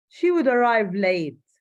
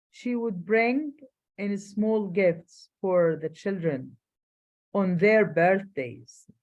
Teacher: stress on the word would indicates criticism and disapproval of typical behavior in the past